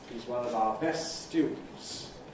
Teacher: Intonation staying low … till ˈbest, High Head, ˋ_stjuːd_n̩ts, High Fall (Nucleus). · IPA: hiz ˌwʌn əv ɑː ˈbes ˋ_stjuːd_n̩ts